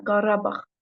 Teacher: normalda Qarabağ sözündə vurğu düşür ikinci hecanın üzərinə